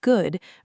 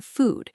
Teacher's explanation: in good, your lips are only slightly rounded and the vowel is shorter, while in food, your lips are more tightly rounded and pushed slightly forward, almost like you are making a small circle with your lips.